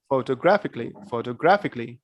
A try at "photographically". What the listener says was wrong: All right, great.